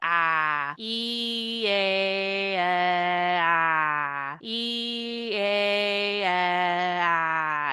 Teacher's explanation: You can feel your tongue getting lower and lower each time.